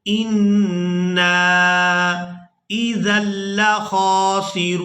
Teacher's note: نون مشدد پر غنہ کریں گے اور اس کے بعد نون کو جب اپنی حرکت یعنی زبر کے ساتھ پڑھیں گے تو ہم نے الف مدہ کی وجہ سے کھینچ کر ادا کرنا ہے